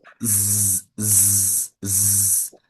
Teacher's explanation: They are pronounced in the same place of articulation. s z The only difference is z vibrates and s doesn't.